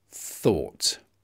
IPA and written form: θɔːt (thought)